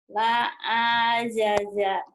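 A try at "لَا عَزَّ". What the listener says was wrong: Nggak ada yang panjang, Bu. La a'aza. Alif dan ain, ya.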